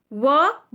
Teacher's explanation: व देखिए बोलकर देखिए, दांत और ओष्ठ, हमारे ओठ जो है, ओष्ठ जो है वो हमारे दांतों में मिलते हैं, तब ये व बनता है